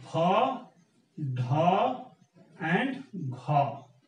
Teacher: a sound is pronounced with ha sound assimilated there, then it becomes aspirated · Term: aspirated plosives